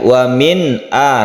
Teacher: nun mati bertemu dengan Hamzah kita sebut dengan izhar cara membacanya harus jelas dan tidak didengungkan tidak dipanjangkan · Wa min a, tapi tidak boleh terlalu ditekan nunnya. Wa min a bukan, tapi biasa saja. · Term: idhar